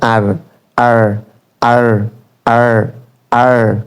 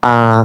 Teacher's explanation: আমেরিকানরা আরকে র উচ্চারণ করে ব্রিটিশরা আ বলে